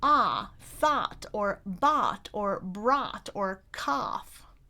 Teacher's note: a lot of people pronounce that /ɔ/ as in bot, more like /ɑ/ as in box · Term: merger